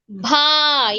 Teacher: ఎందుకు భా అయింది? దానికి దీర్ఘం ఉంది. ప్లస్ ఇది ఏ అక్షరం? మహాప్రాణాక్షరం. భా. రెండు సేమ్ టైం లో పలకాలి.